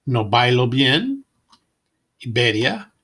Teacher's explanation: It is softer, allowing some air to pass through the lips when intervocalic, located between vowels.